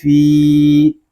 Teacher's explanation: آگے فا یا زیر فی، یہاں فا کو ہم ایک الف تک کھینچ کر پڑھیں گے کیونکہ یہاں پہ یا مدہ ہو رہا ہے